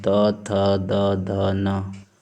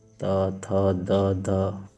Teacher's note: जब हम लोग बोलते हैं तो जो हमारी जीभ है दांत को स्पर्श करती है। त, थ, द, ध ऊपर का जो दंत है उसको स्पर्श कर, इसीलिए इनको दंत व्यंजन बोला गया है।